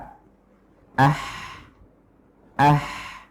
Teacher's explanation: yang menempel atau yang mendekat adalah tengah tenggorokan yaitu bagian dari katup tenggorokan yang disebut dengan lisan wismar atau